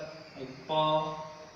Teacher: प का उच्चारण स्थान ओष्ठ